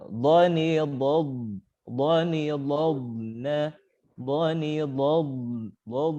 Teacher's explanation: ketika huruf dot berharokat sukun, maka perjelas dengan cara diseret sedikit